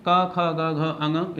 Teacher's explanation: इन सभी को हम कंठे वर्ण के नाम से जान सकते हैं। बिल्कुल, कंठे वर्ण माने गले से बोले जाने वाले वर्ण कहे जाते हैं, माने पूरा क वर्ग